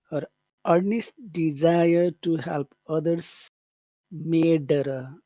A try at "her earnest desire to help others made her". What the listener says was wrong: That was good.